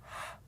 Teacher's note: So my throat tightens, okay, my mouth opens, and my tongue sort of goes back. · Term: hard H sound